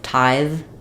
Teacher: with tithe I have to keep the air flowing